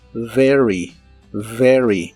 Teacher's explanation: la V o V chica como la conozcas en inglés es labiodental y vibrante.